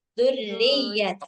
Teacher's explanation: Dzurriyyata agak ditasdid. Agak ditekan.